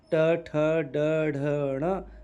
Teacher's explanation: उसी प्रकार से ट वर्ग है तो ट वर्ग ट, ठ, ड, ढ, ण यह बोला जाता है मूर्धा से